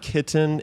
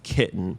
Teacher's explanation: you're not really saying the letter T it's just this closure of the glottis